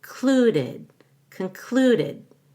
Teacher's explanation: so the c-o-n is reduced to a schwa and you stress the clue cluded concluded but come down again